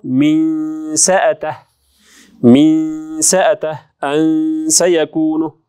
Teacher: Sin тамгасыга келсек, sin харфы ичке болгондуктан ихфа да ичке болот.